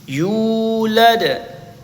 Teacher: Yu dibaca panjang, dua harakat karena waw didahului dhammah.